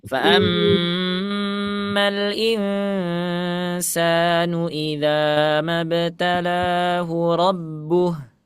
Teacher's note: Kalau wakafnya di rabbuhu, hu-nya jangan dibaca 2 harakat. Rabbuh hanya harus sukun.